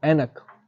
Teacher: कंठ तालव्य से बोला जाता है अर्थात कंठ की और तालू की मदद से बोला जाता है